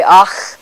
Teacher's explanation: an English ear thinks of it as an H like sound but more spitty or noisy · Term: velar fricative